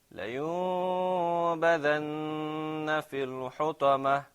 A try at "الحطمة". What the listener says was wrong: That sound, حطمة, it's a ta sound.